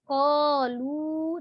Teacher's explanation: jadi lu-nya itu tetap 2 harokat sama dengan bacaan qa panjangnya ya